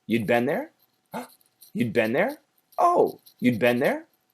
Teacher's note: because it's a question, we have to raise the tone at the end of the sentence.